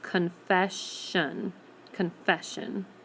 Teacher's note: spelling doesn't change it still adds ends with the S but we're not going to hear the S sound at the end anywhere we're going to hear the SH sound